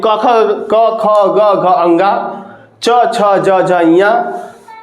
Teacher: इन सबके स्पर्श होने से जो व्यंजन बनते हैं, है ना, उनको हम क्या कहते हैं? स्पर्श व्यंजन कहा जाता है